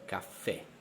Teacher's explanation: tronche l'accento cade sull'ultima sillaba